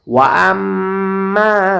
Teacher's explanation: আমি এখানে গুণনা করব মিমের উপরে তাসদীদ এসেছে